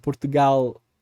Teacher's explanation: Já no português europeu, a tendência de uso predominante é o L, o som de L que a gente não tem no português brasileiro, que seria então assim, Portugal, Então, a língua ali atrás dos dentes também, um pouco mais para cima.